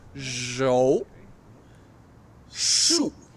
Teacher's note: zhou is second tone, second tone, and shu is fourth tone, like you're mad.